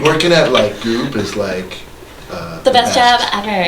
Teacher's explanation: every sentence ends and it goes up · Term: intonation